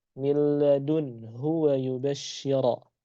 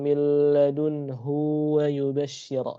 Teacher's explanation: sukun maka huruf ha otomatis dibaca bukan dua harakat tetapi dibaca satu ketukan